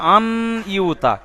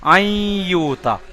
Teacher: তারপরে দেখবেন এখানে রয়েছে ঈদগামে ইয়া, দেখছেন এখানে ইয়ার উপরে তাসদিদ, মানে সাকিন তাসদিদ, সাকিন এবং তানবিনগুলো বাদ দিয়ে ইয়ার ভিতরে ঢুকে যাচ্ছে, এই জন্য বলা হয় ঈদগামে ইয়া